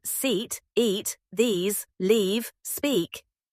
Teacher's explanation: Long ee as in seat, eat, these, leave, speak. Your lips pull back slightly. The sound is longer.